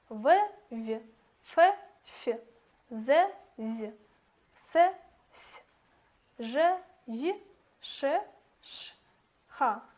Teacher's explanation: органы речи смыкаются не полностью, вследствие чего образуется щель, через которую проходит воздух, и производятся щелевые согласные.